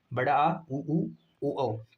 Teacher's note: जीभ के पिछले हिस्से से उच्चारित होता है। इसमें कुछ कुल पांच स्वर आते हैं। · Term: पश्च स्वर